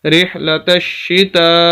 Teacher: تو بہرحال رحلتشی، تا زبر الف مد تا، رحلتشتا، سب سے بڑی مد 5 الف کے برابر ہم نے اس کو کھینچنا ہے